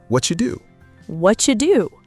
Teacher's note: The T sound at the end of what and the D sound at the start of do fuse together to create a brand new ch sound.